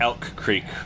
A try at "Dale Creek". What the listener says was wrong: Hey, I'm sorry. Do y'all not pronounce the D? I said Dale. It's Dale Creek.